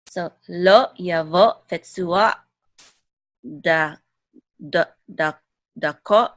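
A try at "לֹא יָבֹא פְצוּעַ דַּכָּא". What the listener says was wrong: Mm-hmm. Very good.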